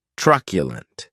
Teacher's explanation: Keep in mind that it is pronounced like you're saying the letter Q, truculent. The last syllable has the schwa